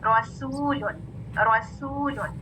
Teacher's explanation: आपकी आवाज शो करेगी कि ये बारीक सीन है, सौद नहीं है